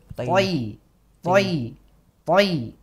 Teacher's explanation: jadi lidah itu terangkat pangkalnya ketika diucapkan pangkal belakang berarti belakang jadi kan ini lidah paling belakang itu naik begitu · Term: huruf tho